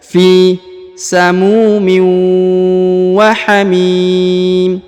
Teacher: huruf fi dipanjangkan 2 harokat karena di depannya terdapat ya sukun